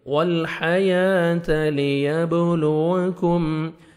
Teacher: با حروف قلقلہ میں سے ہے، ڈبل ساؤنڈ آئے گا.